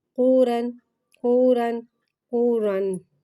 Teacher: قاف کو ایک الف یعنی تین مقدار کھینچ کے پڑھیں گے۔ قاف حرف مستعلیہ ہے، لہٰذا اس کی آواز حلق سے موٹی ادا ہوئے گی۔ پیش کو ہونٹوں کو کی گولائی سے ادا کر کے پڑھیں گے۔